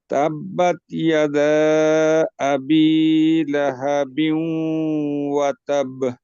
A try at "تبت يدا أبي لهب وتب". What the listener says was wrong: এই দেখেন তাবে, এখানে তাসদিদ আছে, তাসদিদের উচ্চারণ আসে নাই। ওয়াতাব, হ্যাঁ, আর এক আলিফ আর তিন আলিফ প্রায় সমানই হয়ে গেছে আর কি।